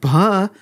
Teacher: is both voiced and aspirated you have a vibration and a puff of air